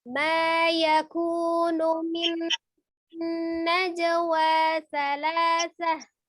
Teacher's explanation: Nah, di sini ada nun bertasdid. Ya, maka diidghamkan itu sama dengan ditasdidkan disertai dengan gunnah. Maka harus ditekan dan ditahan. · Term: idgham bi gunnah